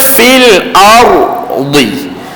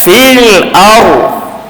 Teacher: Huruf ra ditebalkan, dia tak baca fil ardi, tapi dibaca fil ardi.